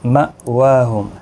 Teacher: حمزہ ساکن کو جھٹکے کے ساتھ پڑھیں گے